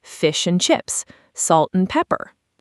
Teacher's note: So, and, which we all know, becomes almost just a quick n sound. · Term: weak form